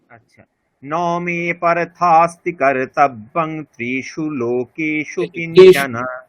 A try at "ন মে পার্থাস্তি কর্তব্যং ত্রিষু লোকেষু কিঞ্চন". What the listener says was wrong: ত্রিশু এখানে হ্রস্ব আছে, আপনি ত্রিশু দীর্ঘ বললেন, ওটা হবে না, ত্রিশু। নমে এরকম হবে না, এটা হ্রস্ব বর্ণ ন, তাহলে কি করতে হবে? নমে পার্থাস্তি কর্তব্যম, বোঝা গেল?